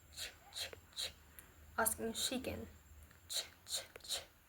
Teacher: This is an intermediate articulation point between the palate and the alveolar ridge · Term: Palatal alveolar